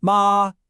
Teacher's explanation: This is the first tone. It's high and totally flat. Kind of like you're singing a high note and just holding it.